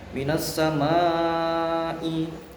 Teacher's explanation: Minas samai, nah ini hukum bacaannya mat wajib muttasil karena ada mat setelahnya ada hamzah di dalam satu kalimat, maka dinamakan mat wajib muttasil, wajib muttasil yang insyaallah panjangnya 3 alif 6 harokat.